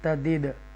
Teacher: یہاں حروف دال ساکنہ ہے اور اس کو کلکلا ساؤنڈ کے ساتھ پڑھیں گے